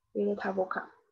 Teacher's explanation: 辅音字母结尾的和元音字母开头的它要连读，嗯，在法语当中叫连诵